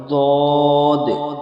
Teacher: জিবের কিনারা এবং তার বরাবর উপরের মাড়ির দাঁতের গোড়ার সাথে লাগিয়ে উচ্চারিত হয়